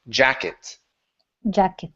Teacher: not actually a CH it's like a it's a light CH and so you need to move your tongue forward in your mouth